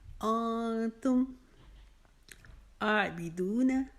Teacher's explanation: آئین کے اوپر کھڑا زبر ہے، اس کو 1 الف جتنا لمبا کریں گے، بی کو لمبا نہیں کریں گے، دو کو 1 الف کی جتنا کھینچ کر پڑھیں گے۔